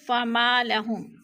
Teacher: فما لهم، فما پہ الف مدہ ہے، الف خالی سے پہلے میم کے اوپر زبر ہے، فما لهم الف مدہ۔ الف مدہ کو ایک الف دو حرکات کے برابر ہم نے کھینچ کر پڑھنا ہے